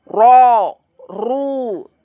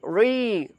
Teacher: ro kalau fathah dan domah itu tebal ro ru Tapi kalau kasrah tipis ri